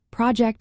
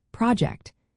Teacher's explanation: project as a noun has the stress on the first syllable, but as a verb, project, the stress shifts to the second. When words have three or more syllables, the rules get a bit more flexible.